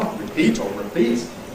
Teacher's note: Some people say /rə/, but it’s a weak vowel. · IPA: /rɪˈpiːt/